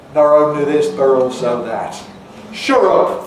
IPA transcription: nɒr oʊnli ðɪs bər ɔːlsoʊ ðat ʃʊr ʊp